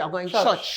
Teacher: Anguillians drop the R sound